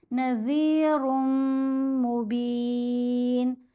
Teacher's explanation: अब हमने नज़ीरुन नहीं पढ़ना, रा को इस मीम से मिलाएंगे तो जो नून की आवाज़ है, रा 2 पेश रुन में जो नून की आवाज़ है वो मीम के अंदर ही मर्ज हो गई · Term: ادغام